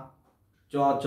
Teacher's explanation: আমার তো মনে হচ্ছে দাঁতের গোড়ার দিকে গিয়ে লাগছে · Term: তালব্য ব্যঞ্জন